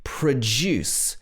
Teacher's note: Here, the stress is on the second syllable, the juice.